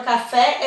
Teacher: a sílaba tônica da palavra café é o pé